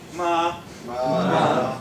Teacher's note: And you're not allowed to change that tone. You see, it's high and straight.